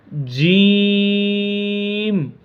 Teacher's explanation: زبان کے درمیان اور اوپر کے تالو کے درمیان سے۔